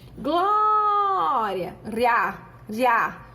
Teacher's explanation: O I soa fraco e o A soa forte. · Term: Ditongo crescente